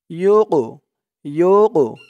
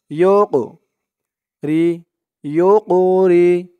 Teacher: কফটা কলকলার হরফ ধাক্কা দিয়ে পড়তে হবে